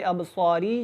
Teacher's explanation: ابصاری جو ہے یہ را جب اس کے نیچے زیر پڑھیں گے تو یہ باریک ہوگی، کیونکہ را کے اوپر زبر اور پیش ہو تو وہ موٹی ہوتی ہے، اگر زیر ہو تو اس کو باریک پڑھا جاتا ہے، لیکن یہاں پہ یہ ساکن ہو جائے گی وقف کی صورت میں تو اس کو ہم کیا کریں گے موٹا پڑھیں گے۔